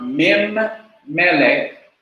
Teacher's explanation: The noon or the n in the min drops out.